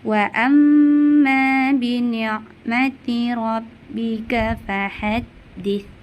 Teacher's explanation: bacaannya dimasukkan dan didengungkan dan dipanjangkan bacaannya kira-kira hingga 3 harokat. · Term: gunna musyaddah